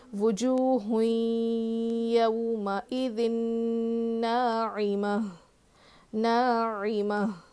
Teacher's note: تو یہاں پہ وقف کریں گے نا، آیت ہے نا تو گولتا پر وقف کرنا ہو تو وہ ہائے ساکنہ بن جاتی ہے. تو یہاں پہ ہا کی آواز آنی چاہیے. وجوہ یومئذ ناعمہ ناعمہ، عین کی آواز بھی آنا.